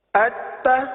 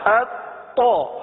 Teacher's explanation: اب یہاں دیکھیے ہم نے حرف تا بھی پڑھا اور تو بھی پڑھا، ان دونوں میں فرق کیا ہے؟ تا میں جماؤ نہیں کرتے، تو میں جماؤ کرتے ہیں، تا میں کلکلا نہیں کرتے، تو میں کلکلا کرتے ہیں